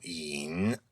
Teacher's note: You would spell that in pinyin, Y-I-N, and it's the third tone, which is the low tone